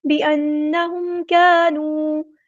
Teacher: میم ساکن پر ہم نے ٹائم نہیں دینا اظہار، کیونکہ یہاں پہ اظہار شفوی ہو رہا ہے